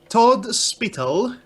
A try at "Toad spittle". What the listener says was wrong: Okay, that's a Todd. toad. It just sounded like you said Todd.